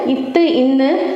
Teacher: இத்து, இன்னு ஆகிய இருமைகளும் மேல்வாய் பல்லின் அடியை நாக்கின் நுனி பொருந்துவதால் பிறக்கின்றன